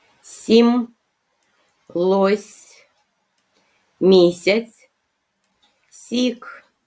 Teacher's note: А у цих словах предметів Ми чуємо і вимовляємо звук с пом'якшений приголосний звук с приголосний позначаємо рисочкою звук с м'який приголосний і